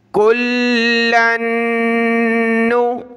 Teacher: لام کے اوپر یہ شد ہے تو ہم نے لام کو سخت کیا، پھر آگے لام کو نون کے ساتھ ملایا تو نون کے اوپر شد ہے، تشدید ہے، تو ہم نے یہاں غنہ کرنا ہے، ناک میں آواز پیدا کرنی ہے